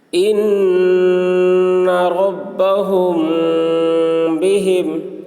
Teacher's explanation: میم ساکن کے بعد با آ رہا ہے، اس لیے غنہ کے ساتھ اخفا کریں گے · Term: اخفاء شفوی